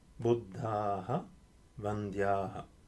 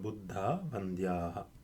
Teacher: if I apply sandhi, the visarga drops